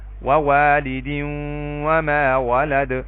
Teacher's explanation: تو یہاں پہ دیکھیں تنوین کے بعد واو ہے جو کہ حروف یرملون میں سے ہے تو یہاں پہ ادغام بالغنہ ہوگا